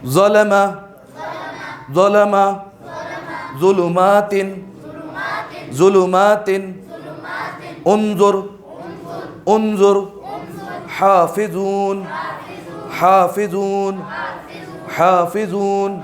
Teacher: ٹھیک ہے, یہ عربی میں اس کو بولتے ہیں ذو. ٹھیک ہے, جہاں سے سا ادا ہو رہا ہے, جہاں سے ذال ادا ہو رہا ہے وہیں سے ذو ادا ہوگا, لیکن تھوڑا سا موٹا کر کے